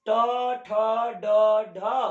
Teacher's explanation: ट वर्ग आधा र स का उच्चारण स्थान मूर्धा से होता है, इसलिए इसे मूर्धन्य वर्ण कहते हैं